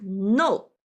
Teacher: falling down sharply, like no, an angry sound